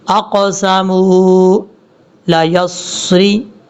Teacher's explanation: قاف حروف مستعلیٰ میں سے آپ پر پڑھا جائے گا